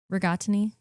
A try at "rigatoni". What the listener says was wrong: It's rig-ot, not rig-odd.